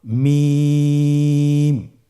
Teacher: হরফটির উচ্চারণ স্থান 2 ঠোঁটের শুকনো স্থান থেকে উচ্চারিত হয়।